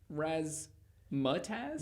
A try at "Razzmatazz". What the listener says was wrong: No, Razzmatazz. You're saying it too slow. Razzmatazz.